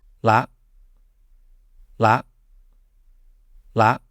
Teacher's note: when you have a low class consonant combined with a short vowel, it's inherently going to be making a short high tone